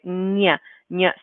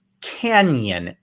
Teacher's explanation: if we have the n with the squiggly on top then it makes an n j sound so we add a kind of y sound to it